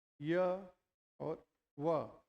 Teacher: य और व का जब हम उच्चारण करते हैं तो पूर्णतः संघर्षहीन उच्चारण होता है